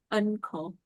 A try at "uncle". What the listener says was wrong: You pronounce the N. You don't need to pronounce the N there. This is pronounced as uncle. Uncle. No need to say un, but uncle. It's like the NG sound.